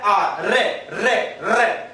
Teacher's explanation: वह व्यंजन वर्ण जिसके उच्चारण में जिह्वा 2-3 बार क्या करती हो, कंपन करती हो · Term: प्रकंपित व्यंजन